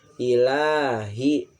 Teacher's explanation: di sini lamnya itu dibaca panjang adalah hukumnya mad tabi'i